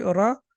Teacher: زبر کو 1 سیکنڈ کے لیے کھینچ کے پڑھتے ہیں